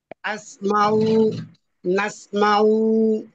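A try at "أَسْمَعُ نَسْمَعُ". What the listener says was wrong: আচ্ছা, টান নাই, আসমাউ, নাসমাউ, টান নাই। হ্যাঁ, দ্রুত বলে দিতে হবে, আসমাউ, নাসমাউ।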